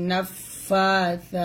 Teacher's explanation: সা যখন উচ্চারণ করবেন জিহ্বাটা উপর দাঁতে লাগিয়ে উচ্চারণ করবেন।